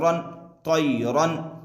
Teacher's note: तनवीन की आवाज़ को जाहिर करके बिला गुन्ना के जल्द पढ़ेंगे।